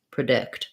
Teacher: So the letters PRE say different things in different words. In predict, the dict syllable is stressed, and so it's going to be a schwa, and it'll sound like predict.